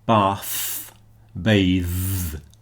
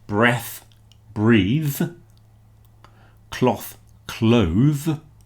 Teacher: We've actually changed the vowel sound as well there. But if you listen to the th bath, bathe. The second one is voiced.